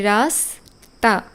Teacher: হয় না যেমন রাস্তা এই যে আমরা উচ্চারণ করছি রাস তা এই যে স এটাই দন্তস এর উচ্চারণ